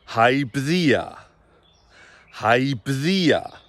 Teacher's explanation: It's got a diphthong and it slides up very gently without being long anywhere.